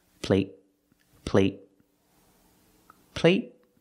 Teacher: there's a t at the end and it's a stop T you have to stop the air with your tongue up